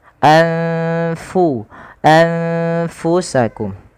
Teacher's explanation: suara nunnya disamarkan kepada huruf fa karena fa termasuk Salah satu dari huruf ikhfa yaitu huruf-huruf yang harus dibaca dengan menyamarkan suara nunnya ya kepada huruf setelahnya.